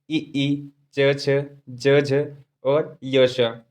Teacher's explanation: तालव्य वर्ण, जिनका उच्चारण तालु से किया जाता है।